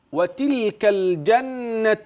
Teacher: احرص على بيان اللام المظهرة من كلمة الجنة